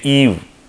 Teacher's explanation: when you say Eve, where you can see that the tongue hump will be at a frontal position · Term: long E